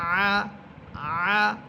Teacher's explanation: আইন কণ্ঠনালীর মধ্যখান থেকে